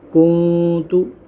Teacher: کاف نون پیش کن، تا پیش تو، کنتو۔ یہاں بھی نون ساکن کے بعد تا آ رہا ہے حروف اخفا میں سے، تو یہاں بھی ہم اخفا کریں گے، یعنی کہ گنہ کریں گے۔